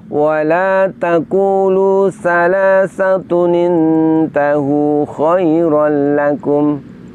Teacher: dhammah tanwinnya itu diganti bunyinya, diganti menjadi nun berharokat kasroh. Nun berharokat kasroh ini diletakkan di bawah hamzah wasol.